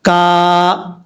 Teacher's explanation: یہاں پر الف سے پہلے زبر ہے اور الف جو ہے مدہ ہوگا۔ الف مدہ کا مطلب ہے یعنی ایک الف کی مقدار اس کو لمبا کر کے پڑھیں گے، کا، اس طریقے سے۔